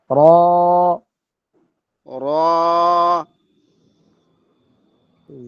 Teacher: জিব্বার আগার পিঠ, তারপর উপরে তালুর সাথে লাগবে গিয়া পিঠটা।